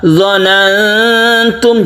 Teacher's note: ketika kita membaca nun mati, kita bersiap membaca ta, itu namanya ikhfa · Kita samarkan nun mati bertemu dengan ta ini, memang samarnya itu sedikit saja karena bertemu dengan ta.